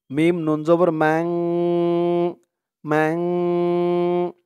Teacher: তো এই নুন সাকিন বা তানবিনের পরে ইকফার 15 হরফ, যেই 15 হরফ আমি বললাম, সেই 15 হরফের যে কোনো একটা হরফ যদি আসে তাহলে সেখানে ইকফা, অর্থাৎ নাকের ভিতরে লুকিয়ে গুন্নাহ করে পড়তে হবে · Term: ইকফা গুন্নাহ